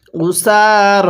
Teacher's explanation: দেখুন সিনের মধ্যেও টান, রয়ের মধ্যেও টান, তাহলে উসার